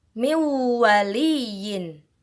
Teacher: Nah, di sini ada nun sukun yang bertemu dengan huruf waw. Bacanya bukan min waliyin, tapi harus didengungkan.